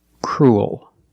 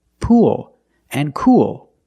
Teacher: You have the long oo sound followed by the dark L.